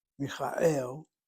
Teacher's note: the emphasis is on the last syllable, Michael, and the kamatz that's medial is either open or closed, and it's one place removed from the accents, which you have right here.